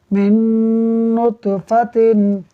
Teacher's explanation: इदगाम हो गया यानी मीम को नून से मिलाकर पढ़ेंगे गुन्ना करते हुए। मीम नून नून ज़ेर मिन नून तो पेश नुत मिन नुत, फा ज़बर फा मिन नुतफ़ा, ता दो ज़ेर तिन मिन नुतफ़तिन।